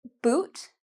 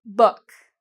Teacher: you have a very small mouth, and very small hole. For book, the size is a little bit bigger. So it's bigger than this hole, but it's not very big.